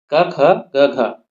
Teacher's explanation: कंठी वर्ण होते हैं और इनका उच्चारण जो है कंठ से होता है।